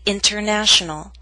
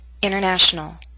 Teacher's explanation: in fast informal speech we sometimes omit the T in the prefix inter as in international